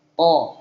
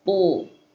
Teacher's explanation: Huruf ta itu akan selalu tebal, ada yang namanya itbaq, lebih tebal tuh kan.